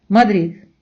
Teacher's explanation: останню д майже не вимовляють вони наче її видихають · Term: лидаща де